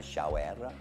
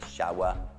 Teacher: R finale sulle parole inglesi sono sempre schwa, non è shower, è shower.